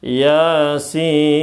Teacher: Yanya dua harakat. Sin-nya berapa? Enam harakat.